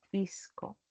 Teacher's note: la aspiración de la s como una jota suave